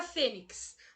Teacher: A palavra fênix, a sílaba tônica dela é o Fê, uma palavra paroxítona.